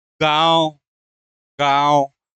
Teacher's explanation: तो गांव जब हम पढ़ रहे हैं तो गांव में मुख से अधिक सांस निकल रही है, ठीक है, और नाक से कम निकल रही है